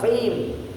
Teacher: Jadi sinnya ditipiskan, mus ya, qimnya ditebalkan, qim ya.